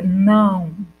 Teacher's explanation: Eu consigo ouvir quando a pessoa pronuncia não. Só que no final eu não consigo perceber o O, eu percebo o U.